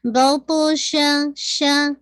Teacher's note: باپ قلقلہ ہے، باؤنس ہوگی آواز اینڈ تو ہیوینس بھی ہوگی